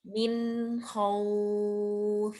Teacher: Tetap ada gunnahnya karena ada nun sukun.